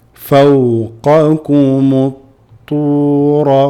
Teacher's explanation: You're going to drop the alif lam, go straight into the ta.